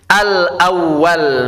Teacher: Kalau hamzahnya di atas alif, maka hamzahnya dibaca tanpa mad, pendek.